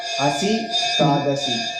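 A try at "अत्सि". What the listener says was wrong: Atsi. Not asi. If you say asi, asi means you close that. That much. Asi means you are. So it is atsi.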